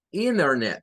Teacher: El norteamericano promedio acostumbra en su diaria pronunciación a que donde hay una N con una T, la T se convierte en otra N.